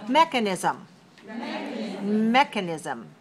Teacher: look at it in terms of oral then we can say it has four syllables and it's stressed on the first